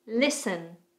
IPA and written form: lɪsən (Listen)